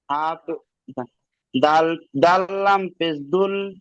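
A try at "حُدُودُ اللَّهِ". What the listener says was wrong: আবার সেই দাল হয়ে গেল, বুঝতে পারছেন? হ্যাঁ, দাল তিন আলিফ, লাম তিন আলিফ।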